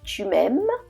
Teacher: so in the first example we have chumem so you notice the last syllable it has a higher pitch it goes up